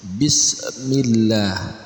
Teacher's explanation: Pada kalimah Allah ini dibacanya dengan tipis